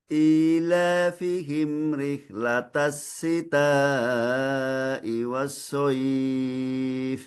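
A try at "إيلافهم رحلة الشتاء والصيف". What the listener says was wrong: Huruf sya, rihlatashi, bukan tasi. Ilafihim rihlatashi. Rihlatash, rihlatash, sh, sh. Rihlatashi.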